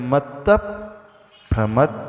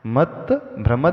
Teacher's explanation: ऐसा सुनाई देगा कि हम भ को एक्स्ट्रा उच्चारण कर रहे हैं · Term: संयुक्त अक्षर